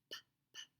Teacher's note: It's a lip puffer. Lips are together and it's unvoiced.